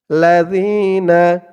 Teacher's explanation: জালের উচ্চারণ একদম নরম পাতলা হবে জিহ্বার মাথা উপরের দাঁতের মাথার সাথে লাগবে উচ্চারণ করার সময়